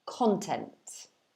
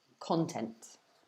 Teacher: So the stress is at the beginning of the word, you can see, because of the little apostrophe before the K.